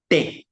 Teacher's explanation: la te latina se hace con, con los dientes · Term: la T latina